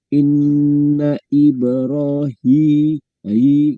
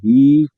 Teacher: Kalau ha itu makhrajnya di tenggorokan yang paling bawah gitu kan.